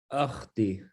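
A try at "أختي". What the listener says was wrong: By the way, there is a dhamma on top, which for some reason it's cut here in because I made the letters bigger. It's ukhti, ukhti, which means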